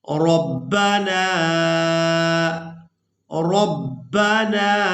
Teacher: را کو پورا ادا کریں گے، را کو با مشدد کے ساتھ ملائیں گے